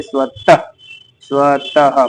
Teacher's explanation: विसर्ग का उच्चारण अघोष ह व्यंजन के समान है